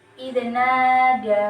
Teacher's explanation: Pada huruf nun itu ada harokat fathah bertemu dengan alif, maka termasuk ke dalam hukum bacaan mad tabi'i yang dibaca panjang 2 harokat